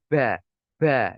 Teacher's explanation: Ya ba, ada aliran nafas, maka ini tidak diperbolehkan. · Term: hamas